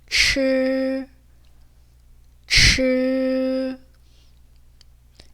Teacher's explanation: 초 또는 취 이런 소리가 나는데 중국어에서는 혀를 말아서 내는 츠 소리죠. 오히려 모음은 으에 가까워요. 그래서 우 소리가 나거나 이 소리가 나지 않도록 주의를 해주셔야 돼요.